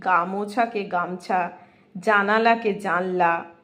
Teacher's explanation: শব্দের মধ্যবর্তী স্থানে অবস্থিত কোনো স্বরধ্বনি উচ্চারণ ক্ষীণ হতে হতে যখন অবশেষে লুপ্ত হয় তখন সেটা মধ্য স্বরলোপ হয়